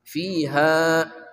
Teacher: ha dari pangkal kerongkongan kita